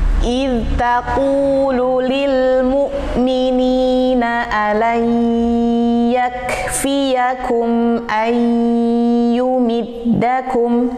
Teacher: nun sukun ketemu dengan ya. Ya, hati-hati, harus masuk ke rongga hidung. Ya, jadi tidak boleh ayu, tidak ayu. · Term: gunnah